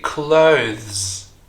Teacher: notice how the th sound here is voiced it's not th but Z and is followed by another voice